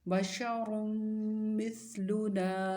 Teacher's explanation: زیر مثل، لام پیش لو، مثلو، نون الف زبر نا، مثلنا، ثا کی آواز بہت نرم ہوگی، نون الف نا مد اصلی ہے، لمبا کریں گے، اور را کو موٹا پڑھیں گے